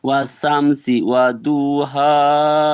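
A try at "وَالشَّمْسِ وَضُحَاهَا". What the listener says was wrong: আস্তে আস্তে পড়বেন, তাড়াহুড়ো করবেন না। সর্বপ্রথম বললেন অসামসি, অসামসি নয়, জি এখানে সিন নয়, শিন। আর শিনের আওয়াজটা একটু মোটা করে। ওয়াশামসি ওয়াদুহাহা।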